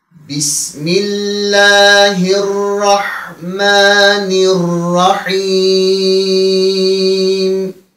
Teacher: Dayandığımız zaman burada meddi ariz olarak 4 elif miktarına kadar uzatarak dayanabilirik. Niye? Çünkü sonda dayandığımız zaman mim harfinin harekesi sükuna çevrilir ve özünden evvel de harfi med var.